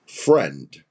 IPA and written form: frɛnd (Friend)